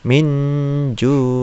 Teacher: Nun mati atau tanwin ketemu dengan jim misalnya, itu dibaca dengan ikhfa, dibaca dengan dengung.